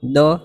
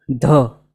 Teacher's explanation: જરૂરી છે અંદરથી પ્રયત્નપૂર્વક બોલાય ત્યારે ઢ બોલાશે પછી દો જોઈએ દ ની બોલવા માટે કોઈ વિશેષ પ્રયત્નની જરૂર નથી આ ધ બોલવા માટે પણ પ્રાણ પૂરવું જરૂરી છે અંદરથી પ્રયત્નથી બોલાશે એવું છે જુઓ દ અને ધ ટ્રાય કરી